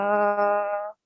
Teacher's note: So it is idgham nakis because noon will be nasal sound merging into the ya mushaddad and 2-second nasal sound